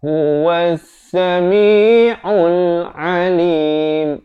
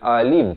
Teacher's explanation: Di sini huruf ain ya, di pertengahan kerongkong.